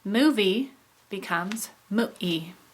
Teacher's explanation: this is when a consonant is substituted with a glottal stop. So our example, movie becomes mu-e. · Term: glottal replacement